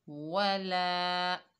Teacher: लाम के ऊपर ज़बर है, आगे अलिफ खाली है, ये अलिफ मद्दा है। अलिफ मद्दा को एक अलिफ की मिकदार खींचकर पढ़ेंगे। ला मिलाकर पढ़ेंगे।